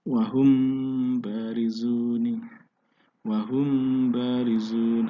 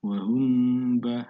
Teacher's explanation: Kedua adalah ikhfa syafawi, hukum bacaan mim mati apabila bertemu dengan huruf ba dibaca samar, dibaca 2 ketukan